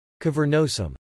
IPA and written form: kævɹ̩nowsəm (Cavernosum)